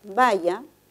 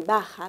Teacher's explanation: el cambio de significado se da entre el contraste de una lateral palatal con una fricativa velar. Por lo tanto, según el punto de articulación entre la primera y la segunda, sería la alternativa D, ya que es un fonema lateral palatal sonoro.